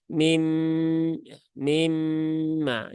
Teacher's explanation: di sini ada nun sukun bertemu dengan mim, maka ini idgham bi gunnah ya. Atau kalau mau disempurnakan dia adalah idgham mutaqaribain sogir kamil bi gunnah.